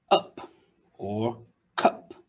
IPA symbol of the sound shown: ʌ